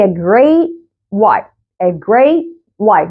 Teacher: يعني ما بطلعش الهواء. I don't release the air of the T at the end of the word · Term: stop